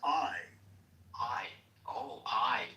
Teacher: That's actually two sounds. Ah and E put together real fast.